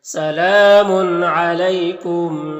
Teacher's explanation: اگر تنوین کے بعد عین حروف حلقے میں سے تو تنوین میں اظہار حقیقی ہوگا